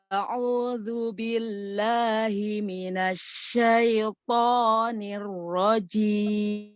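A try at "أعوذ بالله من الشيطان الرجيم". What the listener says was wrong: Hanya saja ini syaiya, jangan terburu-buru. Syaiton. Karena di sini nadanya lambat ya, jadi harus sifat rohnya terus lebih nampak ya. Dan sempurnakan ya, full kan.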